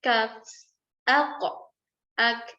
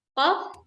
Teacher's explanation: Jadi ada sedikit daging dan sedikit tulang. Jadi makhraj kaf itu lebih maju sedikit dibandingkan makhraj qaf.